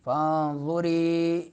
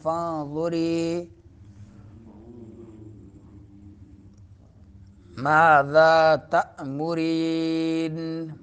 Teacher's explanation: نون کے بعد ظار ہے تو نون کو مخفی کریں گے، چھپائیں گے ناک میں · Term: اخفا